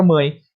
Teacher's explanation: você vai perceber que sai pelo nariz bastante ar também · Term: nasal